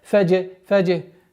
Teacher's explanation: С огласовки фатха уходим на букву джим с правилом калькаля.